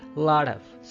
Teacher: when the letter T is between two vowel sound, यानी O और O के दरमियान में T आ रहा है, तो ये T बजाय के T है, ये flap T या फिर pretty D का साउंड देगा